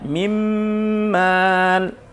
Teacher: suara nun belebur atau menyatu dengan huruf mim sehingga menjadi satu. Mim tapi sifatnya masih ada, yaitu gunnah. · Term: idgham bi gunnah